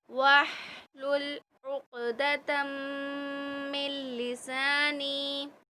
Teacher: یہاں ادغام بالغنہ ہو رہا ہے، تم تا کو میم سے ملائیں گے